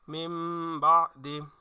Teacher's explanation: যদি নুনে সাকিন অথবা তানবিনের পরে ইকলাবের হরফ বা আসে তাহলে নুনে সাকিন এবং তানবিনকে মিম দ্বারা পরিবর্তন করে পড়তে হবে এই ঠিকানা এখানে ওই নিয়মটাই প্রয়োগ হয়েছে মিম বাদি মিম নুন